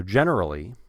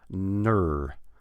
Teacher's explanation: And in America and in Canada, you can hold that R nice and long. We want to hear that R every time.